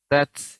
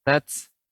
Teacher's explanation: ketika dia sukun, tats, ya sifatnya hamas